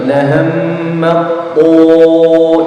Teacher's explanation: Karena ada huruf ta bertemu dengan to, sedangkan huruf ta dan to ini satu tempat keluar dan berbeda sifat. Kalau ada dua huruf yang satu tempat keluar namun berbeda sifatnya, maka itu dinamakan idgham mutajanisain dengan syarat huruf yang pertama harus sukun ya.